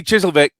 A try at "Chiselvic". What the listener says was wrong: You do realize you just pronounced that Chiseldick.